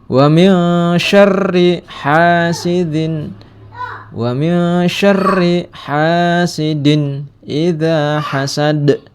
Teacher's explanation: Wa min syarri ini terdapat hukum bacaan ikhfa karena ada nun mati bertemu dengan sya, salah satu huruf ikhfa. Wa min bacanya mil, jangan wa min ya.